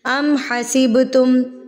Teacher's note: तो बा पर हम कलकला करेंगे, यानी कि इसको हिला के थरथराहट से पढ़ेंगे।